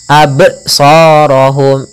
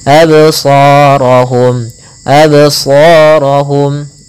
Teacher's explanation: Maka jangan dibaca absarahum, harus ada pantulannya, absarahum. Adapun pantulannya pun jangan sampai terbaca dengan adanya hamzah. Tidak dibaca dengan adanya hamzah yang dimatikan, misalkan absarahum, ini ada hamzah, maka kurang tepat. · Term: qalqalah